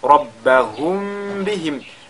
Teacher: Mim sakina suivi de la lettre ba, on fait al-ikhfa al-shafawi